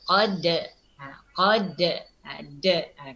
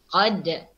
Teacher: Sini kita lihat kan, dapat kita lihat dalam skrin sini huruf dal yang bertanda sukun. Jadi bacaannya mesti kita ni jelaskan bunyikan antulan huruf dal. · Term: qalqalah sughra